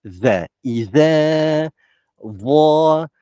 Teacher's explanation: Iza, kita keluar lidah kan, kena gigi atas. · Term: zal